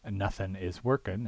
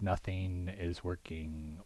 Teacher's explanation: the use of the alveolar N instead of the velar ng at the ends of words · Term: G-dropping